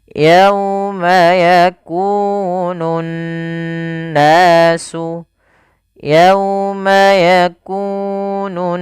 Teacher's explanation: cara membacanya adalah menahan suara n ya sepanjang dua harakat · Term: bacaan gunah, gunnah